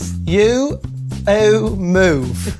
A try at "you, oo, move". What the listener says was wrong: That's right. Very good.